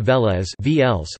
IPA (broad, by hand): ˈvɛːlɛs